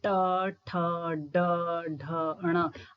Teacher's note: जीवा ऊपर स्पर्श कर रही है, उसके बाद जो है पटक कर नीचे आ रही है · मूर्धन्य या मूर्धा जिन वर्णों का उच्चारण करते समय जीवा जो है मुख के ऊपरी भाग को स्पर्श करने के पश्चात जो है झटके से नीचे वापस आती है या पटक कर नीचे वापस आती है, उन वर्णों का उच्चारण स्थान मूर्धा अथवा मूर्धन्य है।